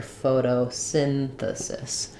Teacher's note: So for photosynthesis, we have secondary stress in the beginning. Photo, we use a flap T here.